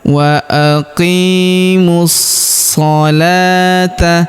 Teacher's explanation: Huruf la kita panjangkan 2 harokat karena terdapat alif kecil di atasnya, dan huruf wawunya di depan ini tidak dibaca ya, atau tidak dianggap.